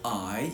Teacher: You can hear that the tongue glides to the top of the mouth when I say I